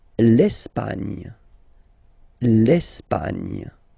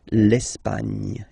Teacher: don't insist on the final E because basically it's not pronounced